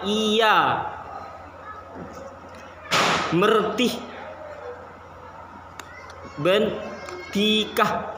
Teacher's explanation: Itu kan vokoidnya I itu tinggi, tertutup, dan posisi mulut itu tidak bulat